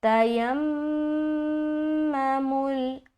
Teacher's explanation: اب یہاں پر دیکھیں گے کہ میم کے اوپر کیا ہے، شد ہے، تو یہاں پر میم مشدد کا غنہ کرنا ہے، ٹھیک ہے۔ دیکھیے دو لیٹر ایسے ہیں جن کے اوپر شد آئے گا تو ہمیں غنہ کرنا لازمی ہے۔